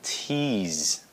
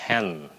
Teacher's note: nó là âm mà nó phải xẹt hơi ra tí xíu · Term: âm t của tiếng Anh